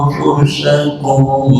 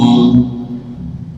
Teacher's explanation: Menyebut anfusakum sampai terkesan suara itu suara M, itu tidak disengaja membunyikan M. Karena lidah kita berjalan dari makhraj nun menuju ke makhraj fa, otomatis itu timbulnya suara M. Itu otomatis, bukan disengaja menyebut M, bukan.